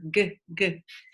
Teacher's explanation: It's voiced back kicker.